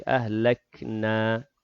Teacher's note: Na di hujung kalimah itu mad asli, 2 harakat.